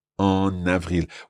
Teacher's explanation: We still keep that nasal sound. It's still en, but we put the N in front of avril.